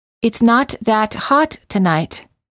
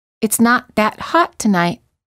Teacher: the first first time the te's are released and the second time the te's are held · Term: held T